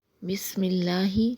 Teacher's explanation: لفظ اللہ کو باریک پڑھیں گے کیونکہ لفظ اللہ سے پہلے زیر ہے